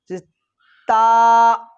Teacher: ऊपर का दांत उनकी जड़ में जबान की नोक हटाने से ता आदा होता है